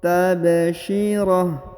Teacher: Dhahikatum tabsyirah, tabsyirah. Huruf H, huruf ta marbutah berubah menjadi H sukun dan huruf tanwinnya menjadi hilang ya, karena berada di ujung ayat atau di ujung bacaan